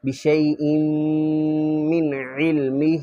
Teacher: یحیطون، بشیء من علمہ، یہ بشیء یہاں پر غنہ کرنا ہے، ہونٹ بند کر لیں گے تو غننے کی آواز آئے گی